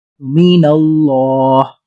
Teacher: اللہ کے لام کو پر موٹا کر کے پڑھا ہے کیونکہ اس سے پہلے والے حرف نون پر زبر ہے